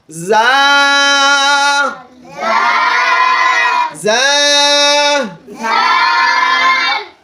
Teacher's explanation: যা হরফটা হচ্ছে জিহ্বার আগা, সামনের নিচের 2 দাঁতের পেট ও আগার সঙ্গে লাগায় উচ্চারণ করতে হবে